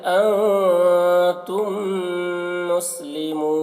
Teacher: میم ساکن کے بعد جب میم آئے تو میم کو میم سے ملا کر غنہ کے ساتھ پڑھا جاتا ہے، اس کو ادغام شفوی کہتے ہیں.